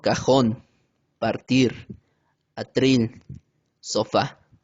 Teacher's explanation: Las agudas son aquellas palabras cuyo golpe de voz recae sobre la última sílaba